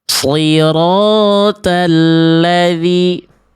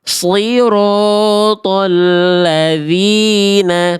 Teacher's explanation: Huruf ta itu huruf yang tipis. Huruf th itu huruf yang tebal.